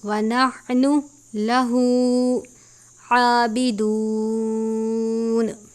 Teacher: عین کے اوپر کھڑی زبر ہے ایک الف کے برابر